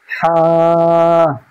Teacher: কণ্ঠনালী বা গলা, গলার মাঝখান হতে উচ্চারিত হবে হা